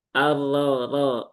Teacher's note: berarti dia tebal ya. Tafkhim. Naikkan pangkal lidah.